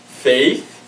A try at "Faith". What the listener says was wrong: Sorry, it's actually Faith. The H is silent.